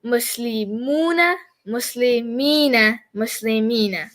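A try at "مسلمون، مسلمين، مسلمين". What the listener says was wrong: Phenomenal.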